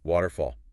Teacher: Nice open ah sound in fall.